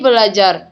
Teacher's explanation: Umpamanya, dalam pengimbuhan perfiks ber pada dasar kata ajar yang terjadi perubahan bunyi di mana fonem r berubah menjadi l. Berdasarkan contoh ini adalah ber ditambah ajar menjadi belajar. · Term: perubahan fonem